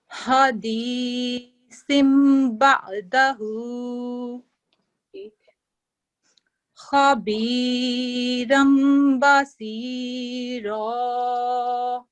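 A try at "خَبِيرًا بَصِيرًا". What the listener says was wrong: तो खा जो है, खा को हम खा नहीं पढ़ते, खौ पढ़ते हैं, ठीक है, तफखीम से पढ़ा जाता है, मोटा पढ़ा जाता है।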